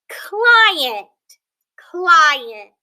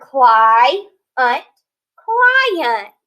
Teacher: And here we're noticing kind of the pattern that E is not making that long E sound. It's actually making the schwa